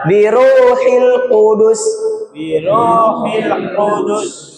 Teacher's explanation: Huruf qof, huruf pangkal lidah